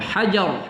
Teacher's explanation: ro kita tafkhimkan ketika mensukunkan